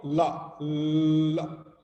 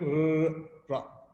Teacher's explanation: this L is called approximant and ra sound is called trill